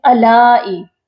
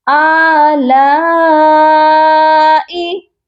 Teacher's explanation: ہم آ کو بھی کھینچیں گے اور لا کو بھی کھینچ کر پڑھیں گے.